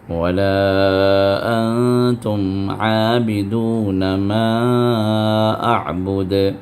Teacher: لام کے بعد جو الف ہے وہ الف جو ہے وہاں پر مد منفصل ہے، جو 4 حرکت تک کھینچنا جائز ہے